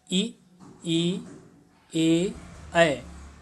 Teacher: जिह्वा के हमारे अग्र भाग काम कर रहा है और वो तालु में जा करके कहीं ना कहीं टकरा रहा है